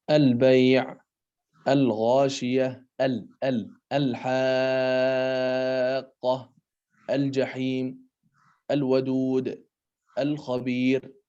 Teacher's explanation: ketika bertemu dengan alif lam ta'rif maka dia diidharkan, pembacaan lamnya jelas terdengar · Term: alif lam qamariyah